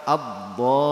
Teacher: lidahnya itu yang samping nempel ke geraham. Sedangkan yang depan nempel ke dalam gigi atas. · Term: dod